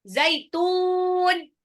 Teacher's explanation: Matlin adalah sifat lin yang diwakafkan, makanya dia dibaca panjang.